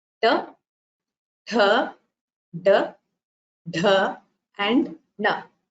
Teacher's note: the tongue which is turned back touches the hard palate in the mouth and produces these sounds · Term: linguals